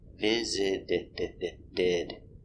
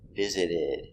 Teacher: That's right, the T in visit is between vowels. Visited. So the T is pronounced as a D. Visited. Fast D.